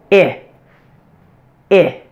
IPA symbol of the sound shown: ɪ